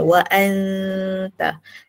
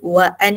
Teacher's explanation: Ikhfa hakiki. Kita sembunyikan huruf bunyi nun tu. Kita dengung.